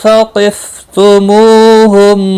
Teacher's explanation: ثقف قاف مستعلیہ ہے، پر پڑھا جائے گا۔ · تو مو واو مدہ ہے، ایک الف کے برابر کھینچ کر پڑھیں گے، اور میم کے بعد واو آیا ہے، اظہار شفوی ہوگا میم ساکن کے بعد۔